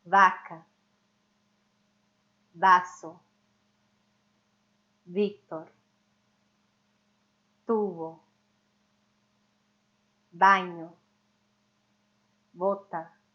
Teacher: levemente bilabial ou seja vai encostar os lábios de maneira bem suave sem soltar muito ar para fora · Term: som intermediário